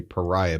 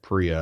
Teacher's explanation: they just skip over that first vowel in the name